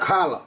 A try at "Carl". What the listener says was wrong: Carl. Not Carla, just Carl. Carl. Carl. Carl. No. No. No. Carl. You don't need to add... It's。just breaking it up a little bit. Carl.